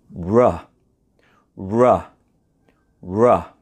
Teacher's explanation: we don't move our tongue, we just make the kissing shape with our lips, and we can successfully make the sound of R, R. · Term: R sound